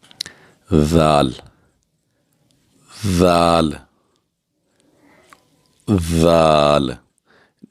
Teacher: بغیر سیٹی کی آواز نکلنی چاہیے نرمی کے ساتھ